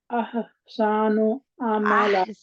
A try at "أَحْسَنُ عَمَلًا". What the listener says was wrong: احسن، احسن عملا، تین کے آگے احسان آپ کرتے، تھوڑا سا لمبا اس کو کھینچتے ہیں، کم کھینچے پلیز، احسن عملا،